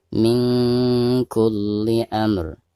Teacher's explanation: Perhatikan ada nun sukun lalu berhadapan dengan salah satu huruf ikhfa, di sini huruf kaf. Maka cara membaca nun sukunnya itu harus disamarkan disertai dengan gunah ya.